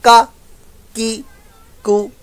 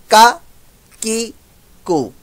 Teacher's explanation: ऐसे बाद औक़ात मखरज के चक्कर में गलत कर देंगे, सिंपल होगा ही सही। ये का अदा ही तब होगा जब जुबान की जड़ तालु के सख्त हिस्से पर लगेगी। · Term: काफ